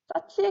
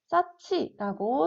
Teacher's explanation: 히읗과 지읒이 합쳐져서 싸치라고 소리가 나게 됩니다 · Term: 거센 소리